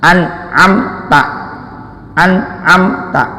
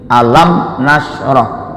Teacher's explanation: hukum bacaannya izhar artinya jelas bunyi m-nya jelas syafawi karena letak pengucapannya makhrajnya adalah syafatain dua bibir